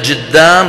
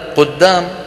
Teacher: وفي بعضها الآخر يجعلونه جيم، مثل هذه البلدة التي نحن فيها، ماذا يسمونها بالعامية؟ فينطقونها بالجيم بدل القاف، ويقولون جدام بدل قدام، وهكذا. فهذه التحريفات العامية تصوروا لو أنها أبيحت في نطق القرآن الكريم كان القرآن راح.